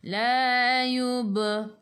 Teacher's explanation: Berhenti dengan nun. Hujung lidah menyentuh gusi atas. · di tengah-tengah ayat ada baris sukun, kena melantun. Lantunannya kecil. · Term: Qalqalah surah